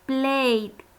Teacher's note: Le agrego la ed en la escritura, pero termina en ninguno de estos sonidos, sino play, sonido de vowel, vocal. Al momento de pasar al pasado, le agregamos la ed en la escritura, pero la pronunciación será con la d.